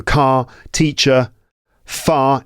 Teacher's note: in non-rhotic accents, the R sound is typically not pronounced at the end of a word, at the end of words, unless it's followed by a vowel sound.